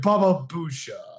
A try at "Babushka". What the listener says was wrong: Babushka? It's Bushka. There's a K in there. I'm pretty sure there's a K in there.